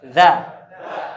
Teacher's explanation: punggung ujung lidah menempel ke ujung gigi seri atas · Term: zal